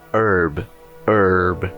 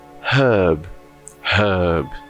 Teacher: Perceba que o H no americano é mudo, no britânico ele tem som, o R é pronunciado no americano e no britânico não.